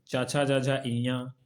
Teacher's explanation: उच्चारण स्थान तालु, तालु की छत का पिछला भाग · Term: तालव्य वर्ण